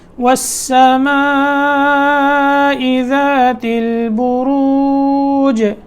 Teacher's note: آخر میں جیم میں قلقلہ کرنا ہے